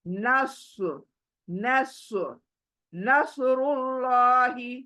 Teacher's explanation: यहां पर स्वाद को मोटा करो और अल्लाह को मोटा करो